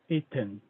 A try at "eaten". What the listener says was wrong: The E sounds a bit longer. eaten.